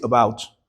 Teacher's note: So, the stress is on the second syllable, b o u t.